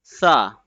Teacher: The tip of the tongue will be touching at the edge of the upper front two teeth very gently and softly in the letter sa.